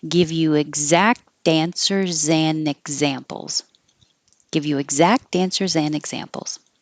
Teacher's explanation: you can drop the D and connect the in and the examples